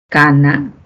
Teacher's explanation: Y luego tenemos las velares, cuando la lengua se va hacia la posición del velo del paladar. Esa parte blandita que les decía.